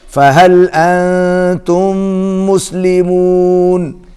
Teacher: أنتم کے اوپر اخفا ہوگا، آواز ناک میں جائے گی، اور میم جو ہے اس کے اوپر تشدید ہے، غنہ ہوگا.